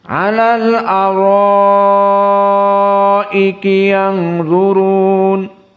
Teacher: ro di sini dalam keadaan mad tabi'i bertemu dengan hamzah fi kalimah wahidah, maka mad wajib muttasil sehingga 6